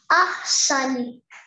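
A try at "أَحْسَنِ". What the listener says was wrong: Beautiful.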